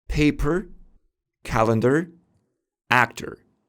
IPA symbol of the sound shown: ɚ